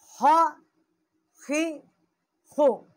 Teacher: خا زبر خا، خا زیر خی، خا پیش خو، خا خی خو، یہ بھی حروف حلقی ہے۔ ادنائے حلق جو ہے اس کا مخرج ہے، جو منہ کی طرف والا حصہ ہے۔